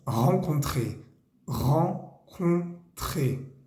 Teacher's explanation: Ahí hay dos vocales nasales. La primera es en, la segunda es un. La segunda es un poquito más cerrada que la primera.